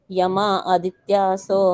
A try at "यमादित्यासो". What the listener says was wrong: यम आदित्यासो नहीं, यमादित्यासो इकट्ठा बोलना है।